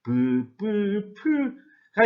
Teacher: 입술 소리면서 파열음인 것은 어떤 것들이 있냐면은 비읍 계열의 소리가 바로 이에 해당한다고 할 수 있습니다